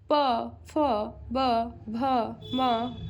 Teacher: प वर्ग का उच्चारण स्थान दोस्तों ओष्ठ होता है